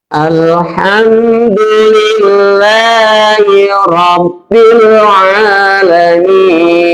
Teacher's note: alif lamnya di situ adalah alif lam komariah, jadi lamnya dibaca. Jadi jelas, dibaca jelas lamnya.